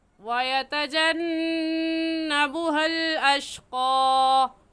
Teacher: نون مشدد پر ہمیشہ غنہ کر کے پڑھتے ہیں، تو ایسے پڑھیں گے وَيَتَجَنَّبُهَا الْأَشْقَى۔